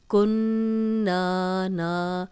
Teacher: نون پہ شد ہو تو غنہ کیا جاتا ہے، اور جس حرف پہ شد ہو اس کو 2 بار پڑھا جاتا ہے۔ یہاں ہم نون کو 2 بار پڑھیں گے، ایک دفعہ کاف کی پیش کے ساتھ اور ایک دفعہ اس کی اپنی حرکت کے ساتھ۔